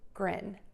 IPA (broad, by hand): grɪn